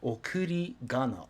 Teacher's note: it's pronounced gana since ri is voiced